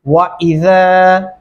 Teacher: نرمی سے ادا کریں گے وَإِذَا زا کی جگہ سے ادا نہیں کریں گے ورنہ یہ درست تلفظ نہیں ہوگا.